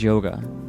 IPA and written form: ˈjoʊɡə (Yoga)